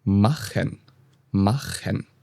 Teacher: when you have other vowels like A, O, U, CH is a little bit deeper in the throat.